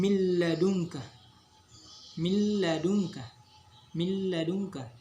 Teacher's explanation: lanjut itu cengkeh sekarang kau Hai idgham bilagunnah idgam bilagunnah artinya memasukkan atau meleburkan tanpa disertai dengung